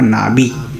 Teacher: ये यहाँ पे फ नहीं पढ़ेंगे, इसको ब पढ़ेंगे हम, जो कि बीच में कहीं आ रहा है, तो नाबी हो जाएगा। ये नाफी नहीं होगा, नाबी।